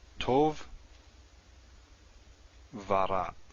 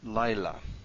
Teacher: Vav before a tone syllable, especially with paired words, will sometimes go va.